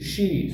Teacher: Yəni bildiğimiz Ş-i, she. Sadəcə biraz sonda bu E səsi uzadılır.